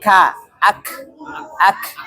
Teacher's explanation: sidah dia keluar nafas namun suara terhenti seperti ka ak ak suaranya terhenti namun nafasnya masih keluar mengalir